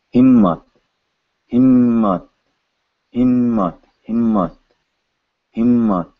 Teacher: when you add the other ma, ma is now twice as long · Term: gemination